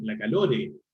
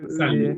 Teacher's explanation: ese fenómeno de agregar una E luego de la última consonante de una palabra es de hecho algo súper frecuente en el español de Chile. Es un fenómeno que se llama epéntesis vocálica.